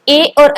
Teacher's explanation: कंठ तालव्य मतलब कंठ और तालु दोनों के माध्यम से बोला जाता है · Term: कंठ तालव्य वर्ण